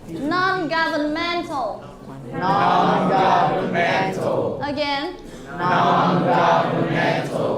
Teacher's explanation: please put the stress on the fourth syllable